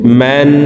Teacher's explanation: হরকতের বামে নুনে মিমে তাসদিদ হইলে সর্ব অবস্থায় নাকের বাসি থেকে গুন্নাহ করিয়া পড়িতে হয়। তো এই মিম তাসদিদওয়ালা নুনের সাথে 3 সেকেন্ড পরিমাণ গুন্নাহ করে ধরে রেখে পড়ব।